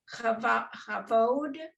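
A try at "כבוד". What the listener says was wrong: Right, kavod. right, kavod. It's really kavod because it has two dots under it.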